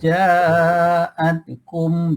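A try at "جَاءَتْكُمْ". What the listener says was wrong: dia huruf ta ni tak ada bunyi ta dia bunyi angin a at ha sikit jaatum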